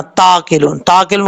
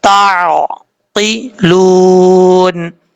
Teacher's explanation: تا کے بعد عین ہے، عین کو اپنے مخرج سے ادا کرنا ہے، حمزہ کی آواز نہیں آنی چاہیے. ایسا نہیں پڑھنا تاقلون، تاقلون غلط ہے، تعقلون.